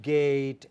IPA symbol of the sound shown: ei